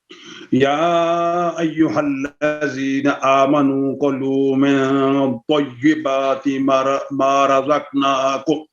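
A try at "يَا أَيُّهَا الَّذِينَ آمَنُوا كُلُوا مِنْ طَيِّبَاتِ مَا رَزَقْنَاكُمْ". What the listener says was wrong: میں نے آپ کو کہا نا ڈبلنگ نہیں کرنی. یا ایہا الذین آمنوا کلوا من طیبات ما رزقناکم.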